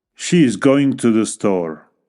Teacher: la entonación desciende al final de la declaración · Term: entonación descendente, Entonación descendente